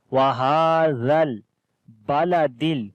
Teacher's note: Zal we read in soft sound and we connect with the lam.